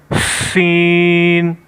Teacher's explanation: سین میں ہم سیٹی کی آواز نکالیں گے اور اس کو باریک پڑھیں گے